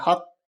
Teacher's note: قاف پہ قلقلہ ہوگا، یعنی قاف ڈبل پڑھا جائے گا